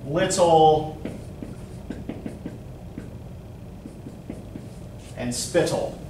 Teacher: Feminine rhyme ends on a much more open note, right? Two syllables, first syllable stressed, second syllable unstressed.